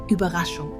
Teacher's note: a bit like saying e while rounding your lips